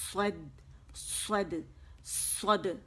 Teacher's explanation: اور دال باریک ہے، صاد موٹا ہے